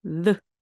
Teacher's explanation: 윗니와 아랫니 사이에 혀가 살짝 나오고요. 그 나온 혀를 목구멍 쪽으로 잡아당기면서 그때 바로 목이 울립니다. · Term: 유성음 TH